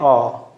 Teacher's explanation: विवृत स्वर, जिन स्वरों के उच्चारण में पूरा मुंह खुलता है